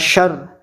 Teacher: nun mati bertemu shin, maka membaca samar tengah-tengah antara nun dan shin sehingga bacaannya mirip suara ang. Shar. Jadi antara samar antara nun dan shin ya, di tengah-tengah. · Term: ikhfa hakiki